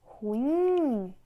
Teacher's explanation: Quando você vai chamar ruim, a sílaba que tem mais força é a última. Ruim, oxítona.